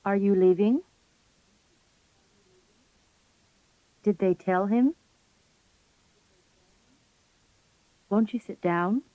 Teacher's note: In asking yes-no questions, the question intonation is generally used. The voice usually begins on pitch level 2, rises to pitch 3 on the stressed syllable, and then steps up or glides a little higher.